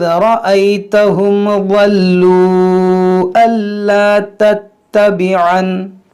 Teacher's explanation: تو دیکھیں اس میں وقف کرنے میں اختلاف ہے، یعنی آپ یہاں وقف کریں گے تو اس کو ولو پڑھیں گے، اور اگر آپ ملا کر پڑھیں گے تو پھر مد منفصل ہوگا، کیونکہ دیکھیں واو مدہ کے بعد حمزہ ہے، تو یہاں پر کھینچیں گے ہم